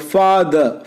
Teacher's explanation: It is a central vowel with neutral lip position. The tongue rising in British English is between half open and half closed position. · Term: schwa